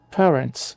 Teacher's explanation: o stress tônico está na primeira sílaba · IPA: /ˈpeə.rənts/